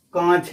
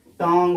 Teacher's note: जो इनका उच्चारण है नाक और मुंह दोनों से किया जाता है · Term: अनुनासिक